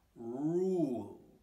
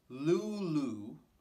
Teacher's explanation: both r and l sounds rule so this one's going to start back in your throat with an er sound and then it's going to end with an uh sound in the front of your face